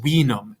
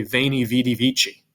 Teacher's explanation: in latin the v is making that w sound so when you look down below and see v-i-n-u-m that's wenum